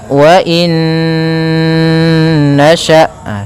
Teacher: cara membacanya masukkan Nun yang pertama kepada Nun kedua kemudian ditahan gunahnya karena idgham itu memasukkan Bil gunna disertai dengan ghunah maka wainasya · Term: idgham bhunah, idgham bi gunnah